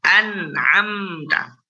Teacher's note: Nunnya, mimnya tetap mengalir sedikit. An'amta. Nah, itu dia. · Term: bainiyah